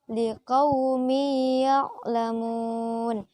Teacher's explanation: Contoh yang kedua adalah liqaumi ya'lamun. Di situ ada tanwin bertemu dengan huruf ya, maka harus dibaca idgham atau berdengung. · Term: idgham bi gunnah